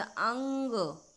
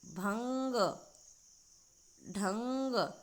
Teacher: यानी अनुस्वार स्वर के बाद आने वाला व्यंजन है जिसकी ध्वनि नाक से निकलती है। जैसे हम बोलेंगे अंग, थोड़ा सा नाक का बल पड़ रहा है ना इसमें।